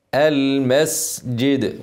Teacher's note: الجيم بعد كده ادخلها جوه من نص اللسان اللي هي وسط اللسان مش من قدام